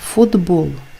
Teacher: приголосний б дзвінкий впливає на вимову попереднього глухого ти і робить його теж дзвінким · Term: уподібнення за дзвінкістю